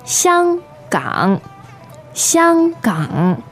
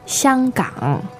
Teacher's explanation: Now, 香港 is first tone and third tone